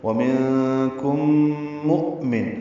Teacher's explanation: حمزہ ساکن جھٹکے سے ادا ہوگا اور میم کو نون سے ملا دیں گے، اظہار ہوگا.